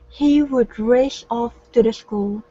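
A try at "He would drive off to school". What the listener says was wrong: So what you need to look for, is your DR combinations. So practice pronouncing the D into the R, and then adding the S's at the end of words.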